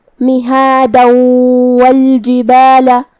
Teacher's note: ادغام کا معنی ہے حرف کو حرف میں داخل کرنا, تو ہم یہ تنوین کو واو میں ملا کے غنہ اور تشدید کے ساتھ یہ حکم کو ادا کریں گے. مہادا والجبال, لیکن ہم کلمت مہادا پہ رکیں گے تو اس پہ مد الف سے رکیں گے. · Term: ادغام بغنہ